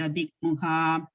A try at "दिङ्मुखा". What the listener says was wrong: So it's not dikmukha, it's dingmukha. Ng sound is coming there.